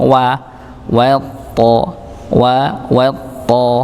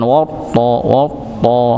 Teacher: wnya tetap tipis thnya yang tebal jadi tidak sampai wya itu ikut-ikutan tebal dikarenakan nyambung pada huruf th dan ini sering terjadi ya misalnya minas ee minasyaitan walaupun sinnya bukan teru tebal tapi kadang ikut pada huruf sinnya nya ya.